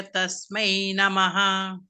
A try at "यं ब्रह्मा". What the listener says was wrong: Like Yam Brahma, you said Brahma. And